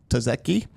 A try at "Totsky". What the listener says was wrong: There's a second T in there. Totsky.